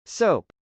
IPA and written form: sˈoʊp (soap)